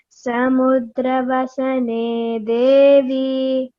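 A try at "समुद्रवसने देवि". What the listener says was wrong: Don't elongate Devi. No, it's only short vowel. No. Samudravasane Devi.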